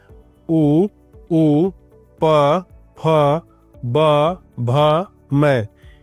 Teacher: इनका उच्चारण दोनों होठों की सहायता से किया जाता है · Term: द्विओष्ठ्य, द्वयोष्ठ्य